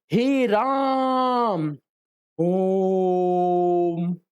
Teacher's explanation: पुलु स्वर को दीर्घ स्वरों से भी अधिक समय लगता है